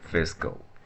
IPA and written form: ˈfɪs.kəl (Fiscal)